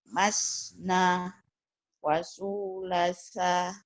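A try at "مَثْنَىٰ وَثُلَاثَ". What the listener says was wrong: Salah cetak, yang benar masna. Masna wasulasa ya. Ibu panjang pendeknya masih kurang hati-hati ya. Masna wasulasa.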